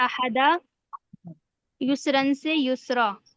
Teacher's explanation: دو زبر میں ایک جی زبر پڑا جائے گا الف کے ساتھ